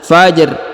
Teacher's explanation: huruf RO di ujung kita sukunkan ya Fajr lalu kita berikan bacaan tipis